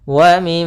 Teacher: mim berharakat tasydid, maka hukum tajwidnya kita namakan dengan gunnah. Cara membacanya yaitu suara mimnya ditahan dulu. Wa mim sepanjang 2 harakat.